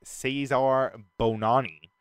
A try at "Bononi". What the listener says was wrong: That's not how it's pronounced. It's Bononi. keep saying Bonani, but it's like baloney with an N.